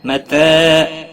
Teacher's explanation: تا کے اوپر کھڑی زبر ہے، ایک الف کے برابر کھینچ کر پڑھیں گے